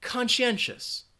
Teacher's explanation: it has four syllables and you have that schwa in that final syllable